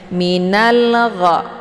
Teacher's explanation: Karena sesudah alif lam terdapat huruf qamariyah yaitu gha. Cara bacanya alif lamnya dibunyikan secara jelas atau jelas bunyi sukunnya. Minal gha. Jadi ini alif lamnya tetap dibaca ya, beda dengan alif lam asyamsiyah. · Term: alif lam al-qamariyah